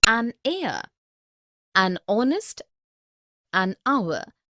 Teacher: Because the words heir, honest and hour begin with a vowel sound, as the initial consonant H is not pronounced